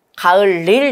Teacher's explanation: 앞말에 받침이 있고 뒷말이 이하여유유니까 니은이 첨가되면서 가을 닐 된다고요. 그리고 나서 리을과 니은이 만나면서 유음화가 일어나서 리을 리을로 발음되겠죠. 그래서 최종 발음이 가을 릴 되는 거잖아요.